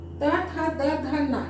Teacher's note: जीभ उठ के दांत को जाके छू रहा है ना।